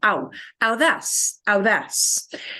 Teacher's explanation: AU in Spanish becomes ow. And you do need to pronounce both of those vowels together.